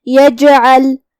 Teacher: جیم کا حکم ہے قلقلہ، مطلب ہم جیم کو ہلاتے ہوئے یہ کلمہ کو ادا کریں گے